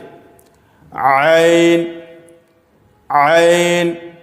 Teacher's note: ऐन बीच हलक से